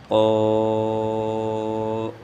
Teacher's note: طا کو ادا کرنے کا طریقہ یہ ہے کہ زبان کو تالو کے ساتھ لگائیں گے